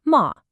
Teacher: the fourth tone that sharp fall